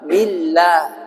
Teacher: Sebelum lafaz Allah ada huruf ba yang berharokat kasrah. Maka lafaz Allahnya jadi tarqiq, tipis. Billah, mulutnya buka.